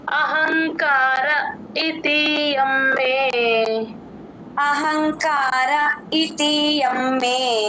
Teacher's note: అహంకార తర్వాత చిన్న పాజ ఇచ్చుకోండి అక్కడ ఈ అచ్చు కాబట్టి చిన్న గ్యాప్ ఇచ్చి చెప్తాము